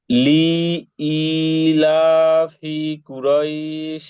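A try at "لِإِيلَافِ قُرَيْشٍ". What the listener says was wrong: ভাই আমরা তো সবগুলা টান হয়ে গেছে লি তো টান হবে না লাম যে লি হরকত না হরকত উচ্চারণ তো তাড়াতাড়ি পড়তে হবে ভাই বলেন লি ই বলেন বলেন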